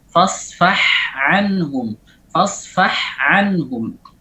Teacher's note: Al-ain wal ha makhrajnya sangat dekat sekali. Maka harus dijelaskan terlebih lagi ketika ain ini berdekatan dengan al-ha.